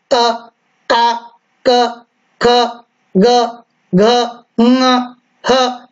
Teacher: जब आप बोलेंगे तो कंठ पर जोर आएगा।